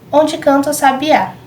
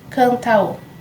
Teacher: Canta termina com A e a próxima sílaba é O. Então elas são juntadas quando a gente conta as sílabas poéticas.